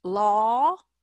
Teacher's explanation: law, that's a really rounded law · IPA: ɔ